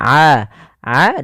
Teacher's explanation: huruf Ain kita keluarkan dari tenggorokan tengah kita